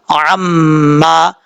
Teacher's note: عما عین میم زبر عام میم الف زبر ما عما عین کو کلیئر کرنا ہے اپنے مخرج سے ادا کرنا ہے میم کے اوپر شد غنہ کرنا ہے ایک الف کی مقدار